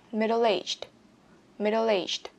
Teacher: Các bạn lưu ý nhấn mạnh vào từ aged cho mình nhé.